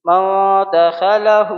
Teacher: میم، نون، زبر مو، دال زبر دا، مودا، خا زبر خ، مودخ، لام زبر ل، مودخل، الٹا پیش ہو، مودخلہ۔ الٹا پیش مد مقابل واو مدہ کے ہے، اس لیے ہا کو ہم ایک الف کے برابر کھینچیں گے